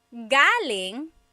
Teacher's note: galing, the emphasis is on the first syllable. That means coming from.